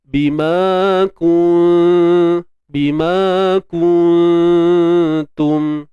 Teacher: Sembunyikan nun di sisi huruf ta. Dan huruf ta ni dia nipis. Dan dengung kita pun turut nipis. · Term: Ikhfa haqiqi